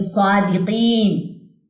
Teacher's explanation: سوا کھڑا زبر 2 کاؤنٹس لمبا کریں، دی، قی کو لمبا کریں کیونکہ یا اس زیر کے ساتھ اٹیچ ہے، اور نون کی زبر کو ڈراپ کر دیں وقف کی صورت میں